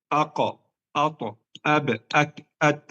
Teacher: semua huruf ini syiddah tertahan suara tidak bisa mengalirkan